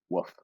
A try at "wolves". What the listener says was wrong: woofs, not with an F. It's just not with the L. So it's wolves, like no L, but with a V for sure. If I was saying one wolf